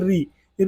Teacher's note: मूर्धा से उच्चारित होता है